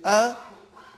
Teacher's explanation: when you say ah it is not alif but it is hamza